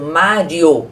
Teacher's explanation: Na palavra Mário, o I é semivogal, que eu falo o I rapidinho,